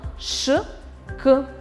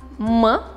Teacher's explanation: При произнесении данных звуков воздух встречает преграду. Согласные звуки ш, к, с состоят только из шума, а согласные звуки м, р состоят из шума и голоса.